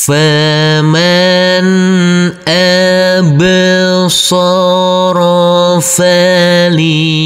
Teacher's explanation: Huruf nun ini adalah bacaan izhar, harus kita baca dengan terang atau jelas karena bertemu dengan huruf alif.